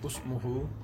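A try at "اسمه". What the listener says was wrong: Ismuhu, not Usmuhu, it is written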